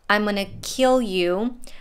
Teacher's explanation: we have two words kill you which are stressed both of them and you is also a bit stretched